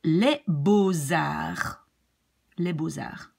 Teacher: we pronounce it like an S linked to the A of arts